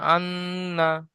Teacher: তাজদিদ নুনের উপরে এসেছে, গুণনা করা ওয়াজিব, তাই এক আলিফ পরিমাণ গুণনা করে পড়তে হবে।